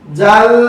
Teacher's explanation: ওয়ান নাহারি ইযা, জালের উপরে জবর, বামে খালি আলিফ, মাদ্দে হরফ, একালিপ টেনে পড়বেন। জাল, লামের তাসদীদ, তাসদীদুল হরফ দুইবার পড়তে হয় এবং দেড় হরকত দেরি